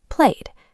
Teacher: ends in a voiced sound, like the y in play, it takes a soft d, played. You only add a completely new syllable when the base verb ends in a t or a d.